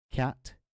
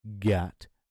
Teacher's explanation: cat no vibration of the vocal cords Gat definite vibration of the vocal cords